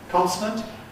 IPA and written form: ˈkɒnsnənt (consonant)